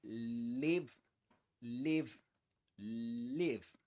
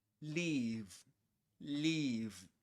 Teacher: It's a short sound in live and a long sound in leave.